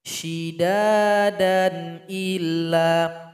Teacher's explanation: Nah, kalau disambung mad iwadnya tidak ada. Jadi enggak boleh di sini dikasih mad iwad.